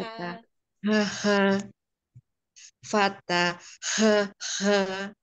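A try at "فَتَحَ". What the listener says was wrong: Eh, fatahaha lagi. Iya, itu masih tenggorokan masih ke bawah ya, Umi. Kurang naik dikit yuk. Fatahaha.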